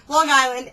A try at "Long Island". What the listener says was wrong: Did you say Long Island? Long Island. Long. Say it with me. Long. It's not long. You don't swallow the G.